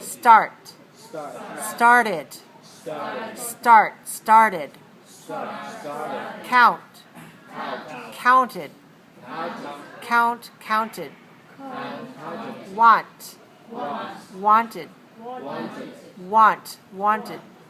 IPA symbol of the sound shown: id